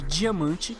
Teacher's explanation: Temos o B de bola, D de dado, DJ de diamante, que é um D mais forte, um D mais africado, vamos dizer assim.